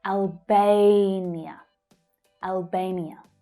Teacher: Notice that the stressed syllable is the /eɪ/ as in 'day' vowel sound.